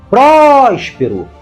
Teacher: a palavra Próspero tem três sílabas e a mais forte é prós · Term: antepenúltima